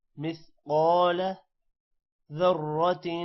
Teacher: قاف موٹا ہوگا اور الف کی وجہ سے قا لمبا ہوگا